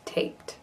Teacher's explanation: the D at the end of taped sounds like a T